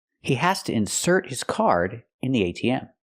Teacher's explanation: I put the stress on the second syllable because it's a verb